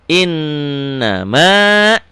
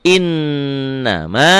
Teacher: Ini gunnahnya innya aja yang ditahan. Ya, na-nya dilepas.